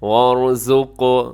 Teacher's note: یہاں پہ را موٹی پڑی جائے گی اور آخر میں قاف قلقلہ کیا جائے گا